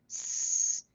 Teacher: the tongue is coming up and letting just some air go kind of over the tongue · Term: sibilant sound